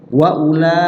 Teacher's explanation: mad panjang wajib muttasil bersambung satu kalimat maksudnya. Dibaca pilihannya cuma satu, yaitu 5 ketukan. Jadi kalau mad jaiz boleh 2, kalau ini wajib 5 ketukan, wajib panjang. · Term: mad wajib muttasil